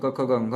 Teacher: क वर्ग में क ख ग घ होता है, इसका उच्चारण स्थान कंठ होता है